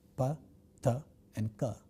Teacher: for the production of such a sound we have a total closure of the flow of air in the vocal tract and then sudden release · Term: stop sound